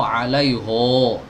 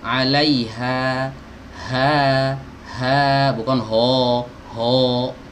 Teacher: Ha yang ini juga dibaca tipis. Kalau dibaca tebal, suara vokalnya seperti huruf O, alaiho. Nah, itu tebal tuh.